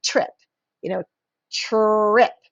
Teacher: You have 2 letters that are making a blended sound, but you can still hear the T and you can still hear the R. That's a blend.